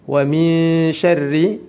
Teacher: Wa min syarri, ikhfa hakiki harus disamarkan dan ditahan 2 harokat karena huruf shin merupakan salah satu huruf ikhfa. Syarri, ri-nya juga dibaca tipis karena dihukumi tarqiq.